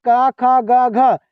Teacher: क जो बोला जाता है ना यह बाबू कंठ से बोला जाता है।